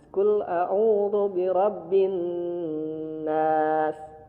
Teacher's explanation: tahan dulu birabbin nas sehingga muncul khayshum yaitu suara di rongga hidung. Dengung itu karena ada suara di rongga hidung sehingga huruf nunnya masuk dulu ke rongga hidung, terasa di rongga hidung, bergetar.